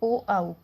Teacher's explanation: ओ और आउ का उच्चारण करने में हमें कंठ और ओष्ठ दोनों की आवश्यकता पड़ती है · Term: कंठ ओष्ठ